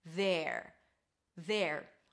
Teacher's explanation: A TH sound, th, then an E, so drop your jaw a little bit, there, and then at the end you bring the tongue up for the R